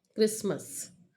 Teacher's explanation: The middle consonant T is often deleted. T is deleted from the cluster ST. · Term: deletion